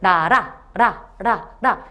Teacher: 튀기면서 내는 소리라고 해서 얘는 탄설음이라고 해요